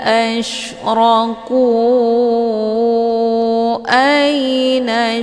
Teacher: Ku dibaca panjang, boleh 4 atau 5 kali ketukan. Ini dinamakan dengan mad jaiz munfasil.